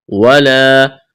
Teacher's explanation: ولا الف مدہ ہے، ایک الف کے برابر کھینچنا ہے